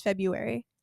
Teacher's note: I refuse to pronounce the first R.